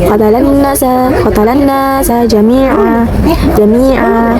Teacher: terdapat tanwin fathah diwakafkan. Cara bacanya tanwin dihilangkan, panjangnya 2 harokat.